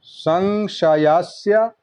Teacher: पहला दंत स दूसरा तालब स